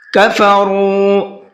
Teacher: را کو منہ بھر کے پڑھنا ہے اور تھوڑا سا کھینچ کر کے پڑھنا ہے۔ کھینچنا اس لیے ہے کہ یہاں پر واو مدہ کا قاعدہ ہے، واو ساکن ہے اور اس سے پہلے پیش ہے۔